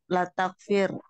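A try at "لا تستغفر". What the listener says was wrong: Latas, bukan. Latas, Ada dua taknya. Latas, tag. Iya, latas tagfir.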